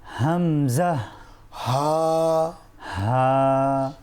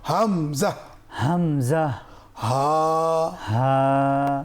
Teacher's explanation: কণ্ঠনালী এর শুরু থেকে উচ্চারিত হয়